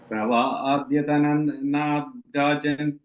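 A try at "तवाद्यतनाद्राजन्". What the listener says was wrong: the first line, adya. I think you said adhya. It's adhyatanat.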